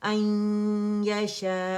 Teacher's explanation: अकमल grade का गुन्ना होता है द मोस्ट कंप्लीट लॉन्गेस्ट गुन्ना